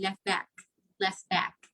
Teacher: sound like when we say left back we do not really our native speakers would not really produce the letter t at the end of left instead of saying left back that'll be left back left back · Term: deletion